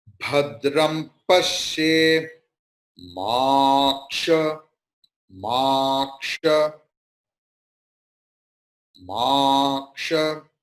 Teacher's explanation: you have to give stress on pa